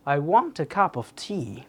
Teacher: দেখেন I, a, of এগুলোকে নিচে রেখেছি তার মানে কি এগুলোকে ইগনোর করে যথাসম্ভব অল্প টোনে উচ্চারণ করেছি। আর ওয়ান্ট কাপ টি এগুলোকে একটু জোরালোভাবে উচ্চারণ করেছি।